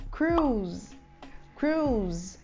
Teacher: Cruise com o Z mudo, porque ela termina com E, a gente usa um som de Z no final, apesar de ela ser escrita com S